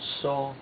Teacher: which is a first tone, high level tone